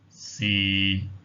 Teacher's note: Notice as well with tone number 6 that the low level tone, it just stays at one level like that.